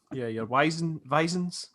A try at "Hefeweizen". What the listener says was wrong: it's actually got a T in it. Sorry, when you pronounce Hefeweizen, it's Hefeweizen.